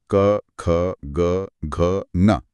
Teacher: आपको गले में बिल्कुल पीछे की तरफ एक हरकत महसूस होगी। इन्हें कंठे कहते हैं क्योंकि ये कंठ से निकलते हैं।